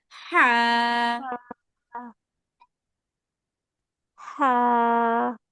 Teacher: গলার ভিতর থেকে আসবে আপু, হ্যাঁ, গলার মাঝখান হা, থেকে, ভিতর থেকে বলতে মাঝখান থেকে। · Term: হা এর মাখরাজ